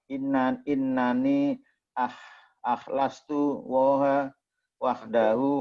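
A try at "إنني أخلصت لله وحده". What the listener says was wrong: lillahi bukan Allah, itu enggak ada alifnya kan. Innani akhlastu lillahi wahdahu,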